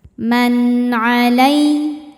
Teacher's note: Sebab nun sukun bertemu huruf halqi atau huruf tenggorokan yaitu ain. Maka nun dibaca idzhar atau jelas. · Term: idzhar halqi, idhar halqi